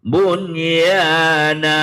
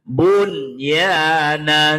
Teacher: nun sukun ketemu ya dibaca izhar